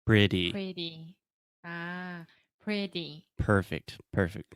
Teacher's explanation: just imagine the T sound as a d because it's a lot more similar to a d when we speak fast